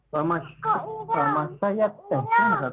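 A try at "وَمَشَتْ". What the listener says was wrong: Wa masyad ya. Wa masyad. Ya-nya hilang. Ya. Harfu ya hilang.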